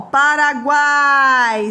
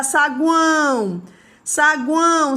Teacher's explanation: Paraguai, sai tudo pela boca. Já saguão, saguão, sai pelo nariz. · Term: tritongo oral